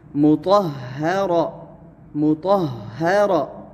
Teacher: تا کو پر موٹا پڑھنا ہے اور ہا کو باریک ادا کرنا ہے اور پھر را کو موٹا پڑھنا ہے